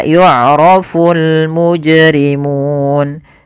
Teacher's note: alif lam yang dia dibaca dengan jelas suara lamnya dan dia ada tanda di atas huruf lam, tanda seperti ini, yang artinya lamnya dibaca dengan jelas. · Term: alif lam qamariyah